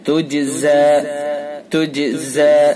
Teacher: جیم حروف قلقلہ میں سے لہذا قلقلہ ہوگا